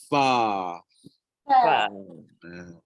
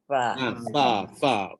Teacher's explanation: Hujung gigi atas, sentuh perut bibir bawah, and then tolak keluar dengan angin, maka terhasillah huruf Fa.